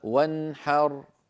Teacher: نون ساكنة بعدها حاء ولا زيادة في زمنها